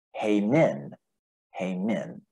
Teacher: That's a circumflex accent on the second. So it's going to be the emphasis on the second syllable.